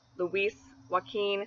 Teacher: they're both the two syllable names with a stress on the second syllable Luis Joaquin and they both have that strong e sound in